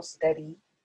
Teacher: steady is actually a trochee because the emphasis is on the first syllable, steady, not steady, steady.